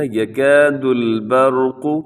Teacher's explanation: یہاں پر را کو آپ نے موٹا پڑھنا ہے کیونکہ را ساکن سے پہلے زبر ہے۔